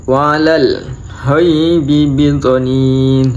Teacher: Wa 'alal ghaibi bidhanin. Itu ada bacaan mad alif sukun, dibaca waqaf. Panjangnya 2 sampai 6 harokat